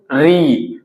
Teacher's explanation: तो री जब भी बोलिएगा तो देखिएगा कि आपका जो जीभ है वो ऊपर की तरफ, पीछे की तरफ टच करेगा। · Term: मूर्धा